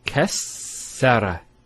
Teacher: Kassara, not kasara. So it's very important with the shadda to give it the double sound.